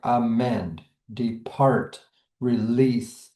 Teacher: We see that stress is on the second syllable. · Let's start with iambs, which are unstressed and stressed. We can hear this in words like amend, depart, release.